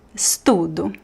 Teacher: The last syllable is really weak.